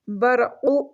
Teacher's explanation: را کو موٹا کر کے پڑھیں گے، را ساکن سے پہلے جب زبر آئے تو وہ موٹی ریڈ ہوتی ہے